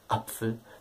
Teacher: das ist sozusagen ein Glottalstopp, ein Verschlusslaut, das, was in der deutschen Aussprache eigentlich vor jedem Anfangsvokal kommt